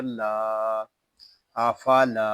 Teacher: حمزہ زبر آ، فا زبر فا، آفا، لام الف زبر لا، آفالا۔ لام کو ہم ایک الف تک کھینچ کر پڑھیں گے کیونکہ یہاں پہ الف مدہ ہو رہا ہے